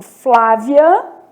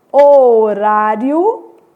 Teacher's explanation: Então, crescente, eu vou ter, por exemplo, Flávia, o I é semivogal, depois uma vogal, né?